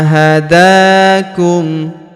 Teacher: huruf da kita panjangkan dua harakat karena alif kecil di atasnya